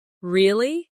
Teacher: when they are surprised, their voice goes up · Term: intonation